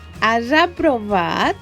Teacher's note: La S al final de paraula és sempre sorda, però com al costat tenim una vocal, la S passa a ser sonora, perquè va entre vocals. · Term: sonorització